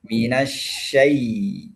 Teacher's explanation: mati tidak boleh bunyi e. Harus bunyinya I.